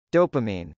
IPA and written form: dˈɑpəm.aɪn (dopamine)